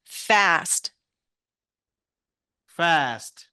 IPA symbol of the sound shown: æ